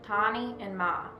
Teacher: In words with the diphthong sound top right A and small uppercase ah, the vowel sound is set quickly with little emphasis on the vowel. They are pronounced with the burst of air with little to no off glide.